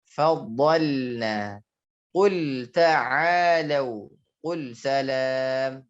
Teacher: Takutnya dibaca faddalana atau faddalna. Faddal juga dia harus tipis ketika sukun, tidak dia faddalna ya, dia terpengaruh huruf dal, tidak.